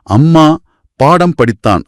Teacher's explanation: எடுத்துக்காட்டா அம்மா பாடம் படித்தான் அப்படின்னு சொல்லும்போது, மா தன்னோட முழுமையான அரை மாத்திரையில ஒலிக்கிறது. உதடுகள் இரண்டும் நல்லா ஒட்டி அந்த மா சத்தம் தெளிவா கேட்கும்.